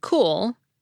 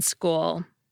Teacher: We get the aspirated /k/ sound in “cool,” but the unaspirated one in “school.”